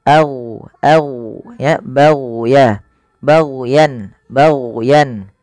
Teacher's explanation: hati-hati jangan sampai memantulkan huruf gain karena huruf gain bukan huruf mantul